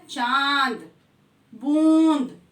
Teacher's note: चंद्र बिंदु का उच्चारण करते वक्त हम नाक और मुंह दोनों से करते हैं। जैसे मैंने कहा चांद, चंद्र बिंदु या अनुनासिक का प्रयोग करते हुए ये शब्द है चांद, बूंद, तो इसमें नाक और मुंह से उच्चारण करते हैं।